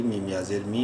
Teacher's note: میم کو بھی ایک الف برابر لمبا کریں گے یا مدہ کی وجہ سے